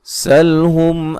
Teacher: سین کو باریک سیٹی سے ادا کریں گے